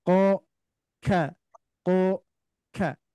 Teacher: makanya ini termasuk makhraj yang berdekatan huruf Kaf dan Kaf tuh kalau Kaf di sini agak maju sedikit sedangkan huruf q agak mundur sedikit bunyinya di sini ya maka bunyikan qo k ko ka beda